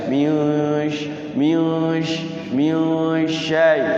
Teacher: Nun sukun ketemu sin besar desis ya. · Jadi ya sya itu di tengah-tengah lidah.